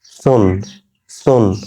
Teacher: জিহ্বার আগা উপরের দাঁতের আগার সঙ্গে লাগিয়ে হবে